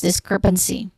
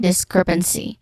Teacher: So we have second syllable crep, the stressed syllable, discrepancy, n which has a schwa sound, and then C, which is a short E sound.